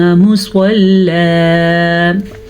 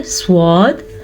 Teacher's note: स्वाद को पुर पढ़ेंगे,